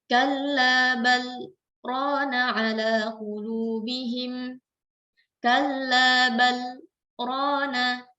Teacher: setelah kata bal, kita berhenti sejenak, baru kita lanjutkan ke kata rona tanpa kita mengambil nafas. Itu yang disebut dengan saktah dan itu ada di 4 tempat di dalam Al-Quran.